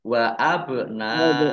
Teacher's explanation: Wa abna ba sukun ya, ba sukun bacaan qalqalah dibaca memantul, ditampakkan pantulannya